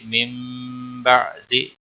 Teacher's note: من بعد نون ساکن کے بعد با آیا ہے، یہاں پر گناہ کے ساتھ پڑھیں گے، نون کی آواز میم میں بدل کر پڑھیں گے، یہاں پر قلب ہوگا، اسے اقلاب کہتے ہیں